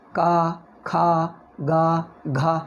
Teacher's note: ಕ ಗ ಕಂಠದ ಒಳಗಿನಿಂದ ಬರ್ತಾ ಇದೆ ನೋಡಿ, ಕಂಠ ಇಲ್ಲಿ ನೋಡಿ, ಬಾಯಿ ಒಳಗೆ ಕ ಖ ಗ ಘ, ಯಾವ ಜಾಗದಲ್ಲಿ, ಇಲ್ಲಿ ಒಳಗೆ, ಆ ಜಾಗದಲ್ಲೇ ಈ ಙ ಬರಬೇಕು.